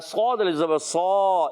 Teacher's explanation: صاد کو موٹا بھی رکھنا ہے، موٹے حروف میں سے، حروف مستعلیہ میں سے بھی، اور حروف مطبقہ یعنی ایکسٹرا موٹے حروف میں سے بھی ہے، یاد رکھنا ہے۔